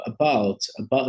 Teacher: dos sons mais características em inglesa que a gente fala que ele é uma vogal né ali uma vogal curta breve né e sem muita ênfase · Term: chuá